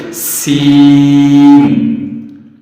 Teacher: سین کو ہم دانتوں کے ذریعے سے، دانتوں کے ساتھ زبان کو صحیح سختی سے لگائیں گے تو سیٹی کی آواز نکلے گی